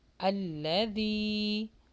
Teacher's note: اب روانی کے ساتھ، وَيْلٌ لِكُلِّ هُمَزَةٍ لُمَزَةٍ، لا، ذی، یہاں پر یا مدہ لانگ کیجئے، ذی، سافٹ مخرج کے ساتھ، ذال پڑے جائے گا، زا نہیں